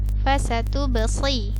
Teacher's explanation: Kemudian sini ada ba sukun, maka dia hukumnya qalqalah, maka terpantul